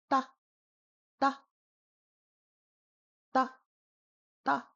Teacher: It is a very soft T, almost a D. · It's a completely non-aspirated T.